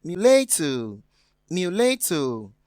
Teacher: we have mulatto having the stress on the second syllable, which is different from mystery on the first